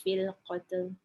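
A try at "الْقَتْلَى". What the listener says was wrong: Qatla. Dia kena bunyi qatla. Nak minta ulang balik sebab yang hujung tu fil qatla.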